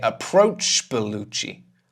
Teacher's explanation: We throw away the last sound in the first word.